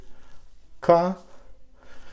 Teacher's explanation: the back of the tongue goes to this place it's a soft palate